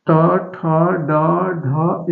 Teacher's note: ट ठ ड ढ इसको मुर्धन कहते हैं